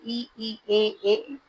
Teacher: इ ई ए किस भाग से उच्चारित होते हैं? तो यह होते हैं अग्र भाग से।